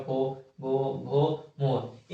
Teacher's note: उसके बाद आता है ओ ब बिना ओट को सटाए हुए बिना होट को सटाए हुए हम प वर्ग का उच्चारण नहीं कर सकते · जैसे पो बोलेंगे तो होठ को सटाना पड़ेगा, पो, भो, भो, मो। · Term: ओष्ठ